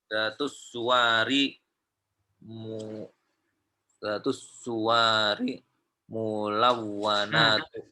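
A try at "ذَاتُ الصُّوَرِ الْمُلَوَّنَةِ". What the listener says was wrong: Ada alif lamnya juga setelah kata setelah aswar. Mulawwanati. Dia sifat untuk suwar. Jadi al-majallatu datus suwari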